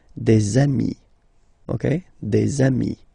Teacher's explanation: And so you've got des ami, okay? And if you make the liaison, so the link between the two, you will get des amis